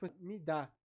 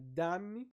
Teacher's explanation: Porque para nós falar, por exemplo, dá-me, é diferente de me dá. Olha como eu começo com fraco e vou pro forte, e dá-me eu começo do forte e vou pro fraco. Isso muda totalmente a inflexão da fala do português brasileiro.